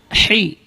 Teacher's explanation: Ha keluar dari tengah-tengah tenggorokan